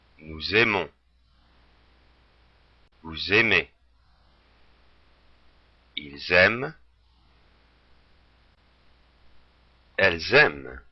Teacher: Now you notice how in the plural form, when we have the S at the end of nous, vous, il, elle, we make the liaison. We make that S heard. And particularly with il and elle, it allows us to make the difference between if we're talking about just one person or a group of people.